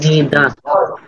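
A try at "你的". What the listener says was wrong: নিদা। Tone ঠিক রাখতে হবে, নিদা। বলেন আমার সাথে সাথে, নিদা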